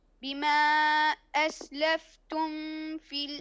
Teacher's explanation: إظهار الميم عند الفاء